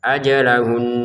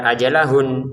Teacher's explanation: Untuk nunnya di sini karena bertasydid kita dengungin juga walaupun kita berhenti. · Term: dengungan